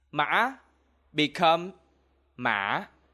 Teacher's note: in Southern Vietnamese we don't use this sound And this sound will be replaced by the LOW- RISING TONE